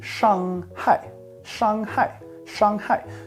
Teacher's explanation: So it's a first tone, the flat one, and then it goes down to a fourth.